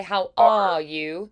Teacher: about too and then the RS they don't go away completely it's not all the way to a British sound like how all you where there's no r at all